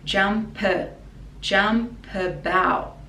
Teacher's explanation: So the P we connect to a schwa sound.